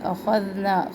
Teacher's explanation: اخذنا، خو ذال، خو کا موٹا پڑھنا ہے، ذال کو نرم پڑھنا ہے